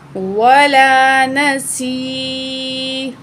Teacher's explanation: 2 point खींच कर पढ़ेंगे उस या को भी और उसके पिछले अल्फाज को भी जो उसके या के साथ मिला के पढ़ा जा रहा है। ठीक है, तो स्वाद को भी खींचेंगे, या को भी खींचेंगे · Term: याय मद